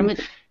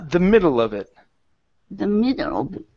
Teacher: we're going to stress on the beginning of the word middle